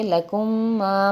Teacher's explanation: کاف میم پیش کم، لکم میم الف زبر ما، لکم ما، یہ میم ساکن میم مشدد میں جا کے مل رہا ہے تو ہم اسے پڑھیں گے لکم ما، میم مشدد میں غنہ